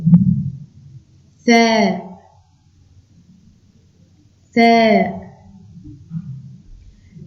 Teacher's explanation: on doit mettre la langue entre les dents